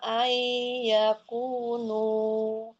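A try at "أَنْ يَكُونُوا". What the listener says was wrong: Itu masuk bukan ai. Masih ada nunnya. Nunnya jangan dilewati. Nunnya masukin ke hidung.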